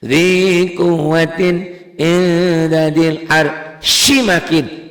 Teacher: jadi panjang. Panjangnya 2 sampai 6. Buat 6 ketukan boleh, ini mad arid disukun.